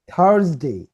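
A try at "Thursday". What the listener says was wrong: জেড এর উচ্চারণটা করতে হবে থার্জ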